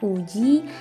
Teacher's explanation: yaitu U tinggi atas belakang bundar dan U tinggi bawah belakang bundar. Grafemnya tetap U.